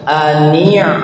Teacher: Jadi ain itu bukan dibaca ka, ani ditekan di tenggorokan.